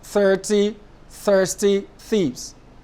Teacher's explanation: The thi is a voiceless consonant. That is, when you produce the thi sound and you place your palm on your larynx, like I'm doing now, there's less vibration compared to when you pronounce the voiced one, like in think, 30, thirsty.